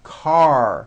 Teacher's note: Your tongue has to pull back. Car. And also your lips close a little bit in the front. The R needs to be very strong and you need to close the word.